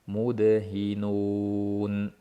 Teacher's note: Ayni paytda dalni qalqala qilish kerak. Mudhinun bo'lib qolmasliki kerak.